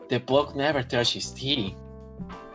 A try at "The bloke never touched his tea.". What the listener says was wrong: And I would also say you should maybe pronounce this one stronger. And I don't mean emphasize, I just mean enunciate.